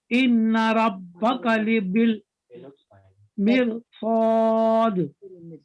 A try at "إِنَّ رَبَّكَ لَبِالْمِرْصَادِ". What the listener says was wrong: إن don't forget this غنة